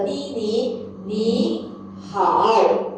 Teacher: both tone number 3, the first syllables we will have to turn our tone to second tone